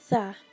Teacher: Cara mengucapkannya adalah ujung lidah sedikit dikeluarkan, lidah bertemu ujung gigi menjadi tha, dan memiliki 4 sifat yaitu dibaca samar, lunak, merendah, dan terbuka.